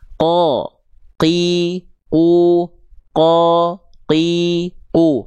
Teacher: Enggak boleh keluar percikan-percikan nafas menjadi ke, k. Apalagi ketika huruf qof-nya berharakat baris bawah dan berharakat simpul angka 9 di atas huruf biasanya suka keluar percikan nafas qi dan ku. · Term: jahr tertahan nafas